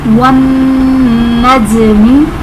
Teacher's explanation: जीम हर्फ़े क़लक़ला साकिन है तो इसमें क़लक़ला को ज़ाहिर करेंगे